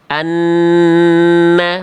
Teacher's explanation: Anna, tahan dulu dua harokat. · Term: idgham bigunah